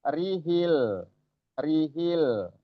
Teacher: Ini alif lam qamariyah, diperjelas lamnya.